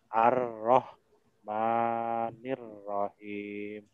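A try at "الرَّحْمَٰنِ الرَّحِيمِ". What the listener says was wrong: Panjangan Mas maknya.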